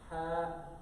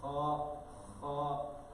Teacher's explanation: the ha is pronounced from the middle of the throat, kha is pronounced from the beginning of the throat. Another main difference and major difference is one is pronounced empty mouth and the kha with the dot one is full mouth.